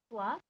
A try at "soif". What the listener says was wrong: Can you say that loudly? For, I don't hear this first sound. I'm assuming you're saying it.